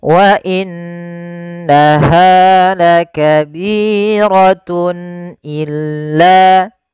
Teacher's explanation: Kemudian pada lafal tun illa, di sini ada izhar halqi, yaitu suara tanwinnya harus dibaca dengan jelas karena ketemu dengan huruf hamzah. Dan ini kita namakan dengan izhar halqi.